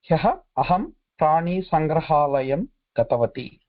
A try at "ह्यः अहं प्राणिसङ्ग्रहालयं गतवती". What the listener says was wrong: उत्तमं.